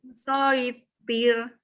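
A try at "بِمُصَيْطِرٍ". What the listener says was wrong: Nah, itu jangan tir, tapi ti. Bimusoitir. Nah, jadi ti, lalu lanjut roknya tipis. Bimusoitir. Bukan musaitir, tapi musaitir. Bimusaitir. Huruf tok. Tapi intinya itu harus tipis.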